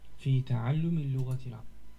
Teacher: You can always tell because in one way you can always tell when somebody's speaking Fusha and speaking the sort of very elevated version of it is that you have the case endings. There are vowels basically ending everything, even words that would otherwise end with consonants.